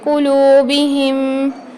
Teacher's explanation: قلوبہم میں دیکھیے واو مدہ آ رہی ہے تو لام کو ہم ایک الف کی مقدار کھینچ کے پڑھیں گے